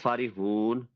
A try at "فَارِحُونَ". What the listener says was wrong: فارحون لمبا تھوڑا سا.